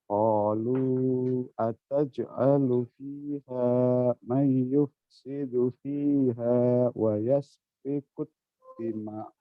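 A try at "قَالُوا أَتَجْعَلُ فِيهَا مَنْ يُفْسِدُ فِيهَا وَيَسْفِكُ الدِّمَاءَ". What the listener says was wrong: Kurang panjang.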